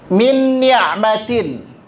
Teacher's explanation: secara kesempurnaan dengung dia tergolong kepada akmal, yang paling sempurna dengungnya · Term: idgham bi gunnah